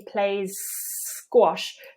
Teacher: we've got two s's together there's no need to break in between them you can just go continue straight from One S into the next